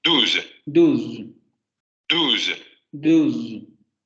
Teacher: Vean cómo al final en todos estos audios parece haber una vocal que sería esta vocal debilitada.